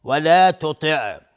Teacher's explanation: ولا تطع تا از حروف استعلاء غلیظ